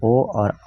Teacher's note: ओ और औ जो है कंठ द्वारा जीभ और ओठों के स्पर्श से ये ध्वनि उच्चारित किए जाते हैं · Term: कंठोष्ठ्य